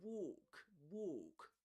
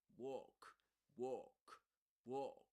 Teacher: the main difference here is that the O is longer in British English